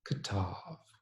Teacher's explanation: the earlier short vowel becoming a schwa or a muttered vowel